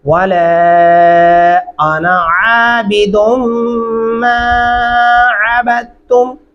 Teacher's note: आइन गले से अदा करेंगे, दुम गुन्ना करेंगे